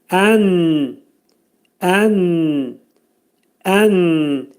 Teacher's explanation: Nun hərfinin məxrəci burunda açıq şəkildə, izharxhar şəklində çıxarılır.